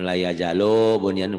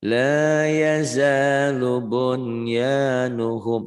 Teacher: Nyambung, harus nyambung, nggak boleh putus.